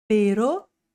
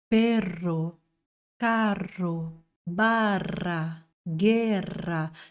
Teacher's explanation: No espanhol a gente tem mais curtinho, só um toquinho na língua, assim, rarara, ere, e mais vibrante, R.